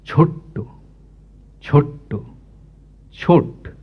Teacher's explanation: এই ছ এর উপরে যে শাষাঘাত পড়ছে সেটা ট পর্যন্ত টেনে নিয়ে যাচ্ছে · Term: শ্বাসাঘাত